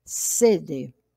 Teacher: Sede, quando adotada com o sentido de vontade de beber. A palavra sede deve ser pronunciada com a vogal fechada na primeira sílaba